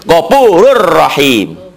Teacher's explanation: tanpa ditahan tanpa dengung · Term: idgham bilagunnah